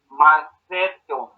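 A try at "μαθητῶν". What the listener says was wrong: No, ese es el error. Macetón. Mira el acento circunflejo. No es el acento sobre la eta, sino sobre la última sílaba.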